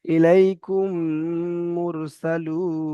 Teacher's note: মিম সাকিনের পরে মিম এসেছে, তাই এই মিমটাকে এই মিমের সঙ্গে মিলিয়ে একালি পরিমাণ গুণা করে পড়তে হচ্ছে